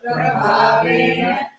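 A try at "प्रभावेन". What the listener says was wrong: Okay, I'm not able to hear at least 3 or 4 people saying bha. Number one. Second, I'm not able to hear all of you saying ana. Prabhavena. So, which is different from yena.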